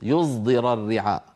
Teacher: الصاد المشمه يعني الصاد المخلوطه بحرف الزاي